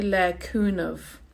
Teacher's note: Dé there, God, is just like day in English, like D-A-Y, and le cúna, silent ending. Now in Munster, you hear that ending, they say le cúnamh, like a V sound